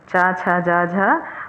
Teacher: ये तालव्य हैं, तालु से बोले जाते हैं।